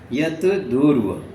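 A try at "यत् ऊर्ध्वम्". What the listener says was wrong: जहाँ पर द शब्द आए, जब शब्द को नहीं पढ़ना, उसके समय तो आधा तो पढ़ना। जत ऊर्ध्वम, जत ऊर्ध्वम, ऊर्ध्वानी ऊपर, द पढ़ोगे तो कोई अर्थ नहीं होगा।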